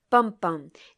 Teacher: a stressed beat followed by an unstressed beat at the end of a poetic line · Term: feminine rhyme